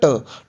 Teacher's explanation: जब आप ट का उच्चारण करोगे ना, तो आपकी जीभ जो है ना वो आगे से बेंड होगी, फिर एकदम आप झटके से उसको छोड़ोगे। ठीक है, ट के उच्चारण में आप पहले जीभ को पकड़ोगे, ठीक है, दांतों के ऊपर इसी से आप पकड़ोगे, उसको एकदम से छोड़ोगे, मतलब जीभ आपकी बेंड होगी।